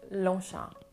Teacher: So it's Longchamp, so ch, Longchamp. The G and the P at the end are silent, which makes Longchamp.